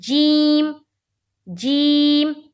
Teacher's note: जीम दोनों दांतों को दबा कर निकाली जाती है